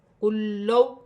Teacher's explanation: لام ساکن ہے، لام مشدد ہے، دونوں کو ملا کر پڑھا جائے گا، جیسے قوف لام لام پیش کل، لام واو زبر لو، کلو۔